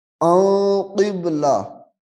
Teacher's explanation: قاف با زیر قب، ان قب، لام زبر لا، ان قبلہ، اب یہاں پہ غنہ ہو رہا ہے کیونکہ اخفاء کا قاعدہ آ رہا ہے